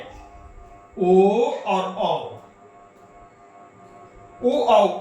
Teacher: तो ओ और औ का उच्चारण कंठ और ओठ से होता है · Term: कंठोष्ठम